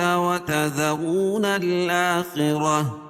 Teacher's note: وتذرون الآخرة، وتذرو واو ساکن سے پہلے پیش ہو تو وہ مدہ اس کو ایک الف کے برابر کھینچ کے پڑھیں گے، اور را کو پر پڑھیں گے کیونکہ را کے اوپر پیش ہے